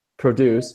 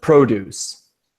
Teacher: when it's a verb we make syllable two stronger